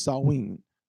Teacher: So in that word in their language, the MH doesn't make what we consider to be MH sound, it makes a W sound. So it's Sawin.